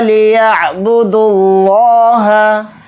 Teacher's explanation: یا کو عین کے ساتھ عین کو اچھے سے حلق سے نکال کر پڑھیں گے ، با کو جلدی پڑھیں گے، دا کو ڈائریکٹ لام میں · حلق سے نکال کر پڑھیں گے، با کو جلدی پڑھیں گے، دا کو ڈائریکٹ لام میں ملا دیں گے لفظ اللہ کے لام میں ، یہ واو نہیں پڑھا جائے گا اور یہ دونوں الف